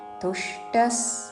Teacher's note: తుష్టస్ విసర్గ ఉచ్చారణ స